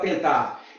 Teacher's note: observa que o N não tem som, ele nasaliza o E. O EN é dígrafo.